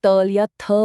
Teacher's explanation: तो हमारी जीभ की नोक दांतों को छूती है